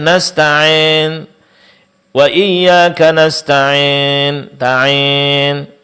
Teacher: mencampur suara mad ya dengan sebagian suara mad alif. Dan itu terjadi lantaran tidak mengangkat tengah-tengah lidah sesuai dengan kadar yang dituntut di saat kita mengucapkan mad ya. · mencampur pengucapan huruf ya dengan sedikit dari bunyi mad alif sehingga mengarah kepada imalah